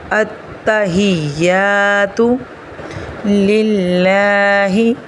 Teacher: یہاں پہ اللہ کے نام کو باریک پڑھا جائے گا کیونکہ اللہ کے نام سے پہلے زیر ہے۔